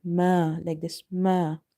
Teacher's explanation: So you can say there is a fatha before alif. So this alif is madda. It means we have to read it by stretching it up to one alif.